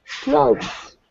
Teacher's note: Clothes. Yeah, and it's all voiced there at the end, so not clothes, but clothes.